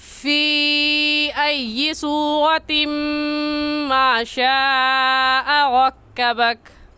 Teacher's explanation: اس مد کو ہم 3 الف کے برابر کھینچ کر پڑھیں گے، نہ اس سے کم اور نہ ہی اس سے زیادہ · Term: مد منفصل